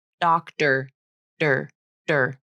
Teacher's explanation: And for some native speakers, the flap also occurs in the word doctor, doctor, der, der. That T is sometimes pronounced like a flap.